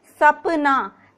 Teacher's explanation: जो हमारी जीवा है वो जो दांत, निचले वाले दांत है, उनका जो निचला हिस्सा होता है, पीछे का हिस्सा होता है, वहां से स्पर्श होती है। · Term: दंतव्य